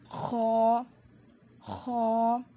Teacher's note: حلق کے اوپر والے حصے سے خ ادا ہوتا ہے۔